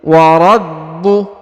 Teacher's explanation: Perhatikan huruf ba ditahan dan ditekan ya, karena di sini ada tanda tasdid.